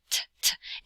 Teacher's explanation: the English T where it has like that clicking sound, t, t, t, and a puff of air. Hold up your hand in front of your face and say T, T, T, or T, T, T, you feel a puff of air.